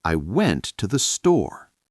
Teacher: The stress is on went and store. Right. Those are the important words.